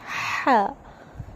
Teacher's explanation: ایک دم بالکل ٹھنڈی آواز آنی چاہیے